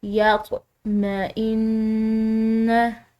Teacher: मुशदिद नून पर गुना होता है। तो इस पर हम गुना करके इसको अदा करेंगे। · ہے، اس طرح ہلا کر، یا میں ان، نون مشدد ہے، مشدد نون پر غنہ ہوتا ہے، تو اس پر ہم غنہ کر کے اس کو ادا کریں گے